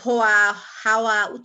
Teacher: অন্তস্থ ব উচ্চারণ অর্থাৎ ধ্বনিটি উচ্চারণের সময় দুই ঠোঁট গোলাকৃত হয়ে সংকুচিত হয় ও বাতাস বেরিয়ে যায়, কিন্তু কোথাও কোনো স্পর্শ ঘটে না